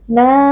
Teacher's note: Nun tasydid wajib dibaca dengan gunnah. Na mad tabi'i karena ada alif yang sebelumnya berharokat fathah, kita baca panjang 2 harokat.